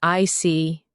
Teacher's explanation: When you show understanding with I see, your tone drops slightly to show calmness.